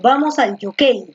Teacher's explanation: la fuerza de voz está aquí en la penúltima